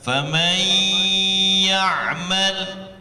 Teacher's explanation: Jadi lebur dia. Nunnya seakan-akan tidak ada karena melebur tadi dengan iya. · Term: idgham bi gunnah